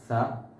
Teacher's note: സ നാവിന്റെ അറ്റവും മേൽ പല്ലിന്റെ താഴെയും ആയിട്ടാണ് നമ്മൾ ഉച്ചരിക്കേണ്ടത്